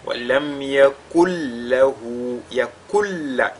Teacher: Ce qu'on a appelé également idgham kamil, donc idgham total. Le nun, la lettre nun sakina ici fusionne totalement dans la lettre lam qui la suit.